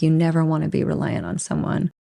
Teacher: he or she stresses on never and reduces want to